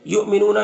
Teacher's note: یہاں پر حمزہ ساکنہ ہے واو کی شکل میں تو جھٹکا لگے گا ، نون میں واو مدہ ایک الف کے برابر کھینچیں گے،